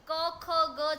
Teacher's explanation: હવે આ જે સૌથી મહત્વનો જો ભાગ હોય ને તો એ ઉચ્ચારણ પ્રક્રિયાની ભાગ ભજવવાની અંદર, ધારો કે હું તમને કહું તો કે ઉચ્ચારણ, ધારો કે ક ખ ગ છે તો એને આપણે કંઠ્ય વ્યંજનો કહીએ છીએ. કેમ કે એ કંઠમાંથી ઉચ્ચારાતા સ્વરો છે.